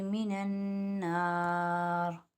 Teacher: من النار نون مشدد میں ایک الف کی مقدار غنہ